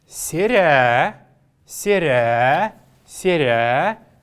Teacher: Последнюю гласную, как вы знаете, мы должны протягивать.